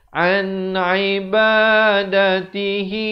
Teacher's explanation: nun mati yang ada tanda mati, hukum izhar halqi. Sempurnakan saja bunyi nun mati, jangan dipanjangkan.